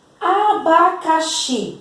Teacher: é a última sílaba, a mais forte, a sílaba tônica. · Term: oxítona